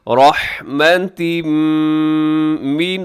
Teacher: تنوین کے بعد میم تو ادغام غننے کے ساتھ